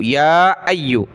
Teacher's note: یا کے اوپر کھڑا زبر مد ہے تو زیادہ کھینچیں گے